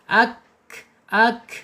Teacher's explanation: Al-hams itu di sini ketika sukun akan muncul, mengalir napasnya. Ak gitu. Kita tak mat tabi'i secara hukum ya, karena ada fathah yang berdiri panjangnya 2 harokat.